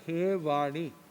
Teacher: आगे संबोधन में केवल आता है हे वाणी, मतलब ई को छोटा हो जाता है, ह्रस्व हो जाता है